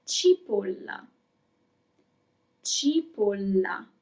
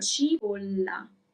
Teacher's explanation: There is a double L, so you have to make it longer, a little bit longer.